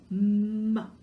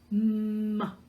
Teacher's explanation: you're pressing their lips together and the sound is going to come through your nose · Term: M sound